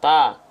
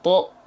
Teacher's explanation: huruf yang tebal itu akan mengubah bunyi vokal fathah dari yang a menjadi o